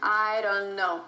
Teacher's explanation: And this D is actually replaced with R.